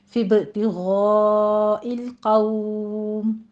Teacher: غین کو پر پڑھتے ہوئے مد متصل واجب ادا کریں گے، 5 کاؤنٹ کرنا ہے